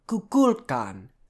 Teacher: the stress is going to be on the second syllable